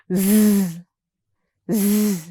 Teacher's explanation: our teeth come together lightly and the tip and blade of our tongue make light contact with the tooth ridge. The sides of our tongue make close contact with our upper side teeth while air escapes through the center of our tongue. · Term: the Z sound